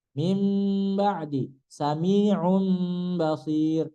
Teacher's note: Iqlab itu nun mati bertemu dengan ba. Diganti mimnya. Iqlab itu diganti menjadi mim.